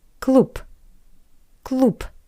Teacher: to C Dr next example the word cloop which means club The Voice consonant B changed to p